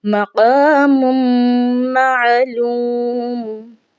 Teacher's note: میم کے بعد میم آ رہی ہے تو لہٰذا یہاں پر ہم نے ادغام کرنا ہے. میم کو میم میں مدغم کر کے پڑھنا ہے کیونکہ دوسری میم پر تشدید آ رہی ہے